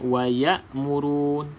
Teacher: huruf hamzah ini berada di bahagian kerongkong yang paling paling bawah